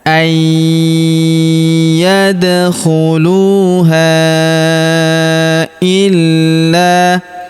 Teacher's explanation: huruf da berharakat sukun kita pantulkan atau kita qalqalahkan. Kemudian huruf ha kita panjangkan empat atau lima harakat karena di depan huruf ha terdapat alif yang di atasnya terdapat tanda garis bacaan panjang empat atau lima harakat yang ini ya.